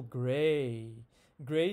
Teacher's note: gray starts in the middle and it moves higher and front